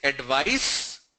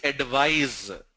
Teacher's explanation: The C that you see here on advice, it's a S sound. The S that you see on advise, it's a Z sound, Z sound. One is advice, the second one is advise.